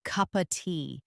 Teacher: If you listen closely, many people naturally pronounce it like cup of tea. Connecting the p sound from cup directly to the o from of and reducing the word of to just an h sound.